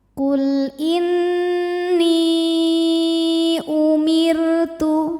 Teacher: Huruf ra dibunyikan secara tarqiq sebab harokat huruf sebelumnya kasrah. Cara membaca huruf ra-nya ini adalah dibunyikan dengan tipis, pangkal lidah datar.